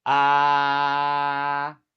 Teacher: A a a a first tone ah the pitch is high and level like seeing a high note. Hold it.